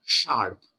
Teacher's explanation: the tongue rolls up curls up touches the pallet